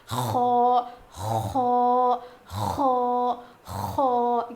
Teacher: اس کو تھوڑا موٹا پڑھیں گے، اس کی آواز تھوڑی اوپر جائے گی، اور جب ہم خو پروناؤنس کریں گے تو اس میں تھوڑی سی گاگلنگ ساؤنڈ آئے گا، یعنی کھردری آواز آئے گی. زیادہ نہیں، تھوڑی سی.